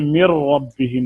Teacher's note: number 4, इदगाम सगीर मुतक़ारिबैन ताम, करीबुल मखरज 2 हरूफ का इदगाम जिसमें मुदगम की कोई सिफ्त बाकी ना रहे, जैसे मिर रब्बिहिम, नून का मखरज अलहदा है, रा का अलहदा है, ये मुतक़ारिबैन हो गया